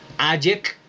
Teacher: Se pronuncia A, la D no suena, luego yek, con C, la C suena ahí como la K